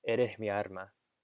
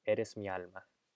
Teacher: había una confusión entre la R y la L a finales de sílaba